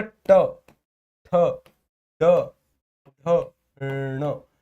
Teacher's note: सर जो हमारा ट वर्ग है वो मूर्धा के द्वारा उच्चारित होता है।